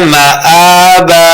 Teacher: حمزہ کے اوپر جو کھڑی زبر ہے اس کو دو حرکات لمبا کرنا ہے